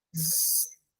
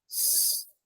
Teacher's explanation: the alveolar fricatives, z, which is voiced, and s, which is voiceless. So this pair are alveolar.